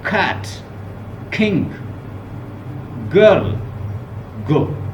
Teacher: वो मैंने बताया था जो सॉफ्ट पैलेट से प्रोड्यूस होगी। बैक ऑफ आवर टंग जो है, it will touch the soft palate. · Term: व्हीलर साउंड